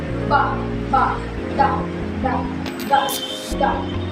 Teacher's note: Pasara na may tinig.